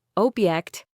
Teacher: Stress on the first syllable, noun, a thing,